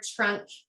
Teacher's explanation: we hear that ch sound because it's an affrication error